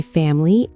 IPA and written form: ˈfæməli (family)